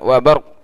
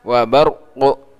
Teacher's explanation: Kalau wakaf di wa barqu, qaf qalqalahnya harus tetap terbaca. Tidak boleh dihilangkan. Wa barq enggak boleh.